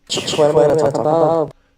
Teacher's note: I would put more space, a longer duration on the word talk, more emphasis in the rhythm. Talk would get a longer amount of time than the other syllables.